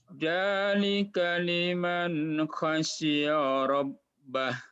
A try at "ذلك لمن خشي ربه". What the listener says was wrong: Bukan ja, za coba za. Za. Dzalika. Zazi zubaz. Zazi zubaz. Zuzan danizaz. minal muzni madzidan danida. Kalau jim beda lagi. Jaji jubaj baj jujan jani jajna minal mujni majijan janija.